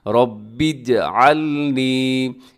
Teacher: बा को जिम के साथ मिलाइएगा